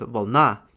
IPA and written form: vɐɫˈna (вълна̀)